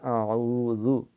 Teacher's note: زال میں یہ سیٹی کی آواز نہ ہوگی